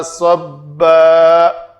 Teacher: دو زبر والی تنوین یاد رکھیں، جب بھی آئے گی اس کے اوپر وقف کرنا ہے تو الف مدہ بنا کر وقف کرنا ہے۔ الف مدہ مطلب دو حرکات کے برابر، اس کو سب اس طرح لمبا نہیں کریں گے۔